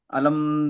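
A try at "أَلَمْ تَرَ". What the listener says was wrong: আলাম তার, আলাম, ওই যে আলাম বলে ধরে রাখছে ওই যে গুণা হয়ে যাচ্ছে। আলাম তার, আলাম তার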